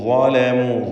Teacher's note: ളാഇനെ തഫ്ഖീം ചെയ്യുക, തടിപ്പിച്ച് ഉച്ചരിക്കേണ്ട ഇസ്തിഅലാന്റെ ഹർഫാണ്.